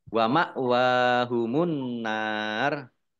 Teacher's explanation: Wa ma' hamzah sukun dibaca ringan ya wa ma' wa wawu fathah berdiri mat tobi'i annar alif lam komariyah alif lam samsiyah karena tidak dibaca langsung masuk ke huruf berikutnya yaitu nun ditandai nunnya ada tasdidnya. Nun tasdid dibaca gunah atau mendengung ditahan 2 harokat. Nun fathah alif mat tobi'i tetapi karena bertemu dengan huruf terakhir yang dibaca sukun karena wakof maka menjadi mat arif lis sukun.